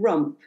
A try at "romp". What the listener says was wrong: Oh, romp with an O, but you said rump with a U.